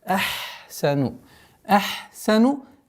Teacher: если фрикативный звук с звуком свиста встречается, ха нужно договаривать.